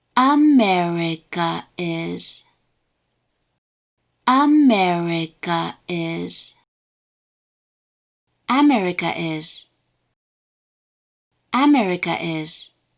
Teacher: the pitch of the word's first mora is high, and the pitch of all remaining mora, including the particle, are low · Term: atamadaka